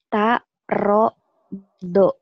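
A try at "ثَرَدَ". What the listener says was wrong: Mana ta? Ini kan titiknya tiga. Apa yang titiknya tiga? Sa. Sa. Ujung lidah cadel. Sa.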